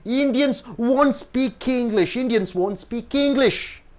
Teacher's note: Indians and English are nouns so you're stressing more on Indian and English